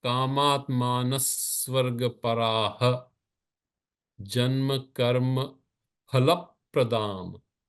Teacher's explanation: Phala, la is carrying the weight because it's a little longer. Its duration is longer.